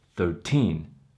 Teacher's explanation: When you have a teens number, the syllable stress is on the teen, the second syllable.